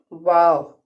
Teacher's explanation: दाल पेशदू, दाल को नरमी से ही अदा करना है। वाव जो है, जब हम उसको वाव को पढ़ते हैं तो होंठों को गोल कर देते हैं ओ की शेप में